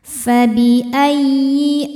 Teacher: Fabi ayyi, ya tasydidnya cukup dibaca dengan nabar, naikkan intonasi suara kita ya jika sebelum ya tasydidnya tidak ada tanwin atau nun sukun. Fabi ayyi a mad badal karena ada hamzah yang dipanjangkan